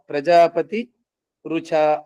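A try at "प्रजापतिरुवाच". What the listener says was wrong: రుచ కాదు, ప్రజాపతి ఉవాచ, ప్రజాపతి ఉవాచ, దాన్ని విడదీస్తే ప్రజాపతి ఉవాచ, ప్రజాపతి ఇలా అన్నాడు, ఉపదేశించినాడు, ఇంద్రునికి ఉపదేశించినాడు, బోధించినాడు.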